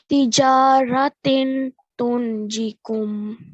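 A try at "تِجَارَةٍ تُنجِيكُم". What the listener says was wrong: No, the you know when you say tin, right? You're manifesting the sound of the tanween. You have to hide it, which means that instead of tin, it should be tin. Hide that sound.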